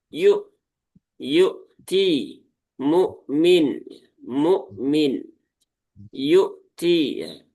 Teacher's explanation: Hamzah punya sifat salah satunya adalah syiddah. Maka pastikan hamzahnya ini dibaca dengan tahqiq ya, atau dengan jelas ya. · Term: hamzah sukun